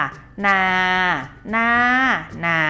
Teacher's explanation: คำว่าน้านะคะนักเรียนขาใช้วรรณยุกต์รูปโทก็จริงแต่ออกเสียงเป็นเสียงตรีนะคะ